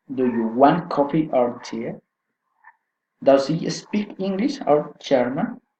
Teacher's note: Alternative question, rising and falling intonation.